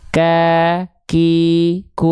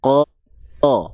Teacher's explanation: pangkal lidahnya dia soalnya turun sehingga walaupun makhrajnya dari pangk lidah tapi ketika momentum vokal a-nya keluar pangkal lidahnya turun